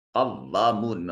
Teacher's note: الف خالی از حرکت ما قبل مفتوح، الف مدہ ہے، تھوڑا سا اس کو لمبا کریں گے